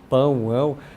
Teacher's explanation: Quando a gente fala pão, ão, você sente que quase lá na campainha ela mexe.